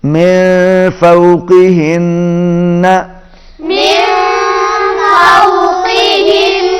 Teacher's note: پہلے نون پر اخفا ہوگا اور دوسرے نون پر غنہ ہے, آواز ناک میں جائے گی, تشدید ہے